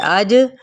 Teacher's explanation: جب ہم اس کو کھولتے ہیں تو اس مشدد حرف کو، تو پھر وہ ظاہر ہے قلقلے کی صفت اس کے اندر آئے گی اج کر کے اج.